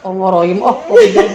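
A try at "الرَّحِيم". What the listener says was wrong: Ayo buka, kalau mau nggak tebal dibuka. Billah. Nah, Ibu terbiasa toknya harus belembung, nggak apa-apa. Sebenarnya tok itu kan huruf pipi, jadi pipi harusnya nggak boleh belembung sebenarnya. Ya, syaiton. Buka toknya.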